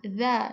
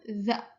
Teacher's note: Dza digigit lidahnya. Dza ikhtiaki. Geseran. Majhur adanya ee getaran dza.